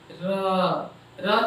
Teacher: र के उच्चारण में जीभ जो है मसूड़े के पास आकर रगड़ खाती है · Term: लुंठित ध्वनि